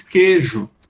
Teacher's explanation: existem pessoas que nem pronunciam esse I, diz queijo.